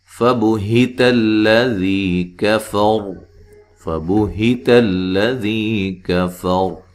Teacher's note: काफ को बारीक, रा को मोटा अदा करना है। रा साकिन हो जाएगी, वक्फन वसलन रा मोटी होगी।